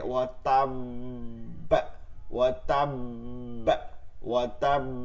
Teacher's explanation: এবার বাটা হচ্ছে কি জজম হয়েছে দুইবার, কোন হরফে? কলকলা হরফে, এর জন্য দুইবার কলকলা হবে, উচ্চমানের কলকলা, উচ্চমানের কলকলা করতে হবে।